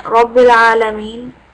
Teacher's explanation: the ra with the fatha, you need to make sure again, full mouth